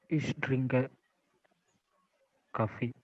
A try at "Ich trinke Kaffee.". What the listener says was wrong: Sehr good.